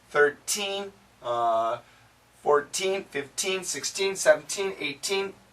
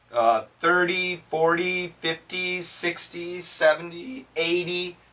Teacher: when we talk about teens, 13, 14, 15, 16, 17, 18, it's a T sound in America. 30, 40, 50, 60, 70, 80, it's a D sound.